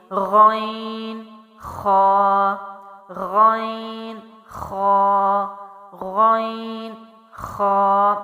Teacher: غین اور خا حروف جو ہیں وہ موٹی آواز کے ساتھ ہیں